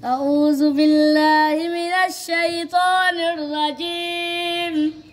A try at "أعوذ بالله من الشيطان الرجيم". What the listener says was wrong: अब आऊज़ु ज़ाल पे सीटी निकाल रहे हो।